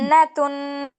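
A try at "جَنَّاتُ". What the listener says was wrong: তুন কেন গুণনা করছো আপু? জন্য তো কোনো গুণনা নেই, যেখানে গুণনা আছে সেইখানে করো।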